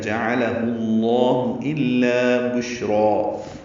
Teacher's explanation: شین ساکن ہے، اس پہ ہمس ہے، تفشی ہے، آواز منہ میں پھیلتی ہے، یہ تفشی ہوتی ہے، اور سانس جاری رہتی ہے